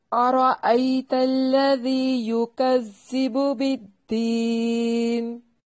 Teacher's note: لام کو موٹا نہیں کرنا، لمبا بھی نہیں کریں گے · را کو موٹا پڑھنا ہے، را کے اوپر فتحہ ہے، اس لیے اس کو خوب موٹا کر کے پڑھیں گے